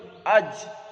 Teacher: যদি জিমের দেখেন, হামজা লিখবেন, জিম দেবেন, জিমে সাকিন করে দেন, হামজায় জবর করে দেন আজ, হামজা জিম জবর আজ, জিবের মাঝখান তার বরাবর তালু।